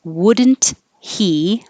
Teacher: you don't have to say the T when you say wouldn't and um I'll put here it can sound like wooden but